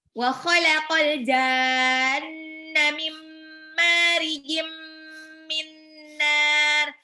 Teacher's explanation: Nun sukunnya masuk ke mim karena sebelahnya ada mim. Tanwinnya masuk ke mim karena sebelahnya ada mim. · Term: idgham bil gunnah